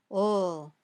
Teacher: When you say ol, the tip of your tongue touches the top of your mouth just behind your top teeth, but the sides of your tongue stay open. The air comes out around the sides of your tongue very smoothly.